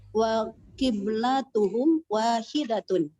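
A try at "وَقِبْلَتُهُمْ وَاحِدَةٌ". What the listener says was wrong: Nah, ahsanti.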